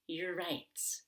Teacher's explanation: i'm making an er sound by pulling my tongue back